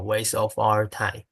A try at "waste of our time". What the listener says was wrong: Okay, I didn't get the T there. Yes, waste. And you see, as an actor, you can express something with that sound of the T. Waste of our time.